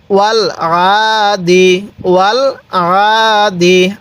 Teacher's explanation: আইনটার মধ্যে গলার মধ্যে চাপ দিলে আইনটা সহি উচ্চারণ হবে